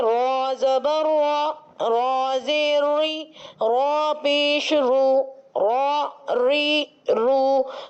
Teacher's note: پشت لسان جب مقابل کے تالو سے لگتی ہے تو حرف را ادا ہو جاتا ہے